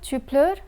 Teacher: in the first question one must raise the intonation at the end to indicate an interrogation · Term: rising intonation